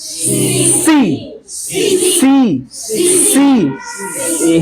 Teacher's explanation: hissing sound आ रहा है ना, सिटी वाला साउंड